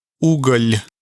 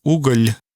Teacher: the entire tongue is placed flat against the roof of the mouth to make that sound l